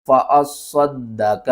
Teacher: صاد کو بھی 2 بار پڑھنا ہے، دال کو بھی 2 بار پڑھنا ہے، اور صاد کو موٹا کر کے پڑھنا ہے، دال کے اوپر 1 بار قلقلہ کریں گے، دوسری بار زبر کے ساتھ پڑھیں گے۔